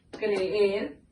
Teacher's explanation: hay dos vocales fuertes, una al lado de la otra, pero están en sílabas separadas. Una sílaba número 1 y una sílaba número 2. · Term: hiato